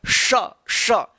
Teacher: देखिए ये स और ये स, इन दोनों स का उच्चारण एक जैसा एक समान होता है, ठीक है ना। तालव्य श, जीभ जो है ना तालु के ऊपर जाता है तब आवाज निकलता है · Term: तालव्य ष